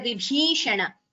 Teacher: Here Vibhishana. Bhi is Mahaprana.